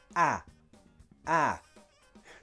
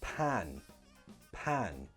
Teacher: for the app sound in pan the tongue is again pushed down and the jaw comes down a bit ah ah so the tongue follows the jaw going down pan-pan